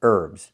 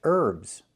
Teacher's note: It's pronounced herbs. The H is silent.